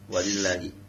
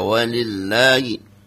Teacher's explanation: Jangan panjang-panjang. Lanya jangan panjang-panjang. Dua harakat aja.